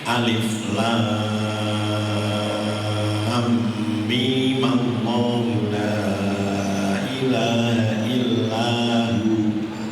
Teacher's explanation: ketika kita wasolkan, memnya harus dibaca ma